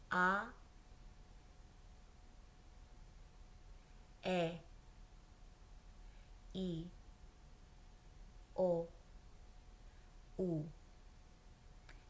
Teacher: But in Spanish, the I makes a E sound, like a long E.